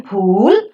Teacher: The lips are rounded when the sound is pronounced. So the vowel oo, as in pool, is back, rounded, just below the closed position, and it's a longer vowel because it has got a counterpart of a short vowel.